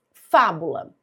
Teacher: Fábula é uma proparoxítona, última, penúltima, antipenúltima sílaba mais forte.